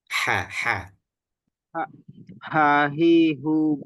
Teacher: H-nya sudah benar cuma lebih ditekan lagi. Jadi keluar ee udaranya itu lebih disempitkan lagi.